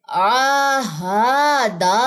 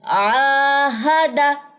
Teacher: اب اس میں اسٹوڈنٹ کیا مسٹیک کرتے ہیں، آہادہ، تینوں حرکات کو لمبا کر دیتے ہیں۔ عین کے اوپر کھڑا زبر ہے وہ تو لمبا ہوگا، ہا کی زبر اور دال کی زبر لمبی نہیں ہو سکتی